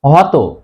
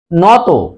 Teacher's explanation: তত প্রত্যয় যোগে গঠিত বিশেষণ শব্দের অন্তে অ এর উচ্চারণ ও এর মত হয়